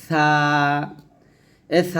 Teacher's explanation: সা যখন উচ্চারণ করবেন জিহ্বার আগারটা উপরের দাঁতের আগার সাথে লাগাবেন